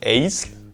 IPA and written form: ˈɛɪ̯zl (eyzl)